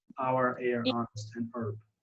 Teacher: we tend to drop the H in these words